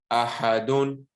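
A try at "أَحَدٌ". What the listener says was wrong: Don't say ahadun. Make it a bit lighter. Ahadun.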